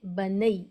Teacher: اس کو معروف آواز کے ساتھ ای آواز کے ساتھ جلدی پڑھیں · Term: حروف لین